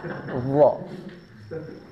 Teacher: Huruf D ini makhrajnya berada di ujung lidah bertemu dengan ujung gigi seri atas. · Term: huruf dha